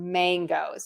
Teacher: I actually pronounce mangoes with that NG sound